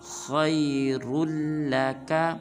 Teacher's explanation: خا اور را کو پر ادا کرنا ہے اور را کو آگے لام مشدد کے ساتھ ملائیں گے